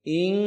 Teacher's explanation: Ta'ing, ta satu harakat, kemudian ing itu ikhfa hakiki, nunnya disamarkan, tetapi pada ikhfa huruf kaf itu langsung naik ke suara hidung semua. Ing, ya. Dipanjangkan 2 harakat.